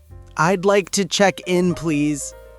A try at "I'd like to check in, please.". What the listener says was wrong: Maybe not so loud.